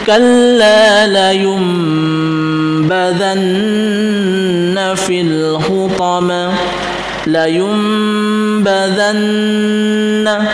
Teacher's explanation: badanna itu gunah musyaddah memang sifatnya sudah gunah kita dengungkan kita panjangkan dengungnya